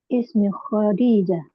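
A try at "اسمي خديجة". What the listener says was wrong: Ismi, panjang dulu, Mi.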